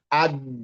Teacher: menempel tengah-tengah lidah dengan langit-langit baru dilepas. Aja. Jadi lentur, terdengarnya lentur gitu loh, rileks, aje, nggak terlalu buru-buru. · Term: Jim, jim